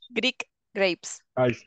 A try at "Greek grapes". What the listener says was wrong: Good. But remember, it's a K. Greek.